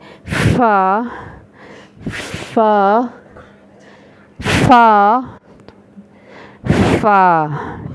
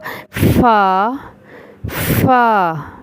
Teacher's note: اوپر والے 2 یا 4 دانت نیچے والے ہونٹ کے شکم میں لگیں گے تو فا ادا ہوگا